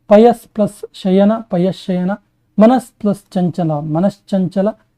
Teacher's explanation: ಸರಿ ಹೇಳ್ತೀನಿ ನೋಡಿ ತವರ್ಗಾಕ್ಷರಗಳಿಗೆ ಶಕಾರ ಚ ವರ್ಗಾಕ್ಷರಗಳು ಪರವಾದಾಗ ನೋಡಿ ಎದುರಿಗೆ ಬಂದಾಗ ಸಕಾರಕ್ಕೆ ಶಕಾರವು ತ ವರ್ಗಕ್ಕೆ ಚ ವರ್ಗವು ಆದೇಶವಾಗಿ ಬರೋದಕ್ಕೆ ಚುತ್ವ ಸಂಧಿ ಅಂತ ಹೇಳಿ ಕರೀತೀವಿ